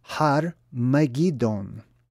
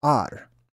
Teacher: Over time, they don't really do so much of a breathy ha sound. It's more ar.